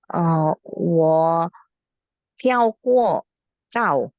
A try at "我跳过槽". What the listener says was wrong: Hao, cao-nya pakai angin ya pronunciation-nya. 我跳过槽，